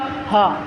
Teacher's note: मुख विवर से गर्म वायु निकलती है किंतु मुख का कोई भी भाग आपस में स्पर्श नहीं करती, उन्हें ऊष्म व्यंजन कहते हैं।